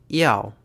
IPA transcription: iau